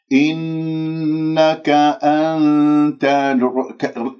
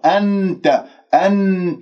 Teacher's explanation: لاحظوا النون مع التاء، كيف أنا أذهب إلى حيز مخرج التاء وأتهيأ، هذا إخفاء. شوفوا ما جايب اللسان رأس اللسان إلى مخرج النون، هذا ما إخفاء، هذا إظهار.